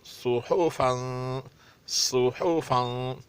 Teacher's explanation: साद मोटा ये और सख्त अदा होगा। हा और फा को पतला अदा करना पड़ेगा और तनवीन भी अच्छी तरह अदा होगी।